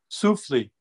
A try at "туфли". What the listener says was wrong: The туфли. The first letter is T, like T, like T. Туфли.